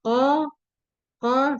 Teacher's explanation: sama seperti huruf kaf merupakan huruf pangkal lidah yang bersentuhan dengan langit-langit lunak